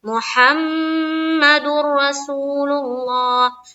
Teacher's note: یہاں پر میم مشدد کا غنہ ہو رہا ہے، اسی لیے ہم دیر لگا رہے ہیں یہاں · جب دال کو را سے ہم ملا رہے ہیں تو را میں بہت جلد بازی کر رہے ہیں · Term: بلا غنہ